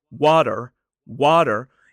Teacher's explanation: that T in the middle is what we call a flap T. It sounds more like a D.